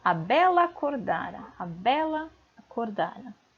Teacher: Essa vogal, ela é átona. Assim ocorre uma fusão fonética entre as sílabas lá e a